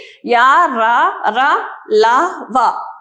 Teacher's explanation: అంతస్తములు అంటే ఏంటి అంటే ఎట్లా పలుకుతాయి నాలుక కొనభాగం నుండి పలుకబడతాయి. మన నాలుక యొక్క కొనభాగం నుండి పలకబడేటివి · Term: అంతస్థములు